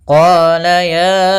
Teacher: Panjangnya untuk mad jaiz munfasil yaitu 4 harokat atau 5 harokat